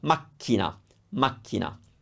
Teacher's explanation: when we have a double C, all we're doing is making the K stronger. We're not changing the sound.